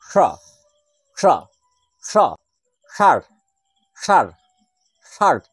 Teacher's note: যে স উচ্চারণ করার সময় এইভাবে মধ্যকে স্পর্শ করছে সেই সটি হল মূর্ধর স অর্থাৎ মূর্ধাকে স্পর্শ করছে